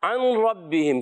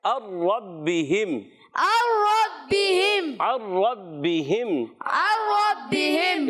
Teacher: جی ہاں ادغام بلا غنہ ہوگا۔ اب ربہم کیا پڑھیں گے؟ نون کی آواز بالکل بھی نہیں آئے گی۔